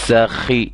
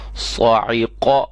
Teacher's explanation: سین باریک سیٹی والا، صاد موٹی سیٹی والا۔